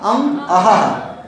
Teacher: ये जो विसर्ग है हा जैसी ध्वनि आएगी और यह सदा किसी स्वर के अंत में आता है